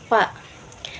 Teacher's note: Huruf fa bibir bawah dengan gigi seri atas. Fa ka dari aqsa lisan atau pangkal lidah.